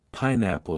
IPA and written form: ˈpaɪˌnæpəl (pineapple)